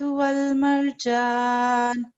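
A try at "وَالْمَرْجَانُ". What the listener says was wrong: ठीक है, रा को थोड़ा ठीक पढ़ेंगे, वल मरजान।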